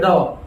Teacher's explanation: तो इसमें जीभ जो है हमारी बाहर की तरफ फेंकी जा रही है, तो ये उत्क्षिप्त व्यंजन कहलाते हैं।